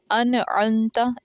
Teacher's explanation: ہم نون کی آواز کو ظاہر کر دیں گے، یعنی کہ ہم غنہ نہیں کریں گے